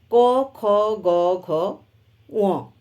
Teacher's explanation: গলার সাহায্য নিয়ে উচ্চারিত হয় তাই এটি কণ্ঠবর্ণ